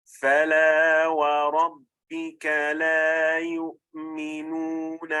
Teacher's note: Either the mandatory natural med or in Arabic med tabi'i of 2 counts, or the optional disconnected med of 4 harakat when it is followed by a hamza